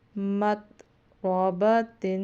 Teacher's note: اس میں را کو پر پڑھنا ہے، تا کے نیچے دو زیر ہے، تنوین میں بھی اتنا سا کرنا ہے، نون کی آواز آنی چاہیے پراپر۔ مت رابطن، کیونکہ آگے حروف ہلکی نہیں ہے۔